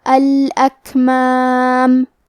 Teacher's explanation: کلمت الاکمام میں کاف ساکن ہے لہذا ہمیں کاف کو ہمس سے پڑھنا ہے اور ہمس کا معنی ہے کہ حرف کی آواز ایسے کمزور ہو کہ اس میں پستی پائی جائے